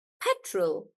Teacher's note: for petrol when it's just petrol then we stress on pet